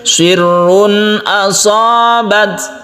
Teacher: bat ini berikan sedikit sifat hamzahnya untuk ta,